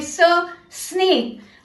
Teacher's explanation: हवा को दांतों के बीच से सीटी की तरह बाहर निकाले, बोले स स्नेक। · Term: द एयर साउंड